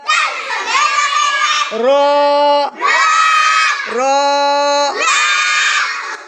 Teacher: 10 number মাখরাজ জিহ্বার আগার পিঠ তার বরাবর উপরের তালুর সঙ্গে লাগাইয়া